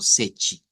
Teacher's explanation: Luego, para el 7 sí, deberíamos decir algo como sechi, haciendo cuenta y caso que el número 7 en portugués se escribe S-E-T-E y que la T se pronuncia como CH